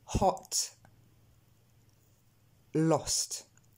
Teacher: On n'a pas vraiment d'équivalence, il est différent du O français, mais vous le prononcez pas tout à fait comme il faut. Il va falloir ici bien arrondir les lèvres et aussi se rendre compte que le son vient de la gorge. Quand vous vous entraînez, vous pouvez même placer votre main sur votre gorge et la sentir un petit peu travailler. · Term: le son O